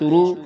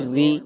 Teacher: اس کے بارے میں جو ہے یہ قاعدہ ہے کہ یہ را جو ہے یہ زبر اور پیش کی حالت میں پر ادا ہوگی موٹی، لیکن زیر کی حالت میں باریک ادا ہوگی